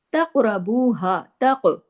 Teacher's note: काफ पे कलकला होगा और काफ को हैवी भी पढ़ना है